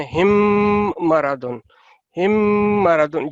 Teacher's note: میم ساکن کے بعد میم متحرک دونوں ملتے ہیں تو آپ نے اس کا ادغام 2 سیکنڈ تک غنہ کرنا ہے